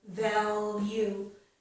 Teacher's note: When I say it slowly, I would put the tip of my tongue up on the ridge to make this L, value. However, if I'm just speaking normally in natural speech, I mostly would not do it this way.